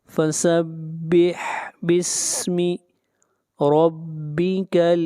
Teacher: را کو موٹا پڑھیں گے، را کے اوپر فتحہ ہے